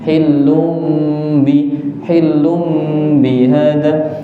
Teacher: Kita sekarang belajarnya yang iqlab tanwinnya, nunnya diganti ke mim.